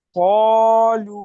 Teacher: ও মাদ্দাকে এক আলিফ পরিমাণ টান দিয়ে পড়তে হয়।